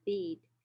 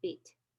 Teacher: For example, if it's followed by a voiced consonant like the, it is longer than if it's followed by a voiceless consonant like t. So bead is the E in the word bead is about 1.5 times longer than the E sound in the word bit. Okay, because the vowel E is preceding a voiced consonant d.